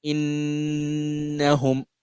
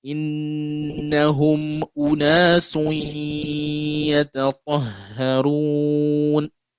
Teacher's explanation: So you do the ghunna for 2 seconds